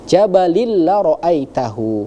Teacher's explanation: tanpa didengungkan artinya langsung dileburkan, langsung masuk ke huruf lamnya yang di depan. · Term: idgham Bila ghunah